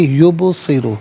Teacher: یبصر باس ساکن ہے لیکن حرف قلقلہ ہے تو آواز لوٹتی بھی محسوس ہونی چاہیے۔ یبصر را پر پیش ہے، را کو پر کر کے پڑھا جائے گا